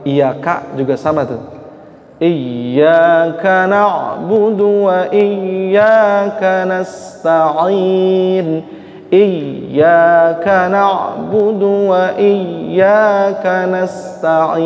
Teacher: maksimalkan baca tasdidnya dua harakah gitu tekanannya